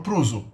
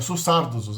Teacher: A última vogal, se a palavra termina com consoante, depois dessa consoante final, os sardos tendem a ecoar a vogal anterior. A última vogal da palavra é repetida depois da consoante final. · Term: vogal paragógica